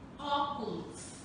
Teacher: As vogais E e O apresentam som aberto